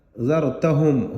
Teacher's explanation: را کو پر پڑھیں گے کیونکہ را سے پہلے زبر ہے۔ ذرتہم، ہم پر یہاں پر اظہار کر کے پڑھیں گے میم ساکن کو۔